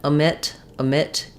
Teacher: We don't have a long, clear O here. The stress in omit is on the mit syllable. You'll probably still see it written with the O diphthong in the first syllable, but I don't want a long, clear O there.